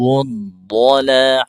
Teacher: huruf dha berbaris fathah dibaca tebal